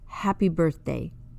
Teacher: the sound is not ha or ha but just the air being forced out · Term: sound of H